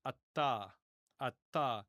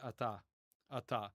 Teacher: with the modern Israeli pronunciation, we really don't pronounce the T as doubled. In biblical times, it would have been ata, ata.